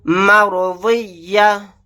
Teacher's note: یہاں پر واد کو موٹا یعنی پر پڑھیں گے. آیت کرنے کی صورت میں تا کو ہا ساکن بنائیں گے